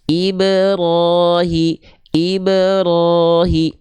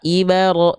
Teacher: pantulannya bukan ke a kalau ke a berarti itu harakat fathah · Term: memantul